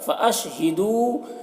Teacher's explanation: واو مدہ ہے، اسے ایک الف کے برابر کھینچ کر پڑھیں گے